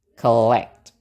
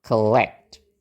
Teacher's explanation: suku kata yang ada O-nya, nggak ada stresnya, berarti kita pakai schwa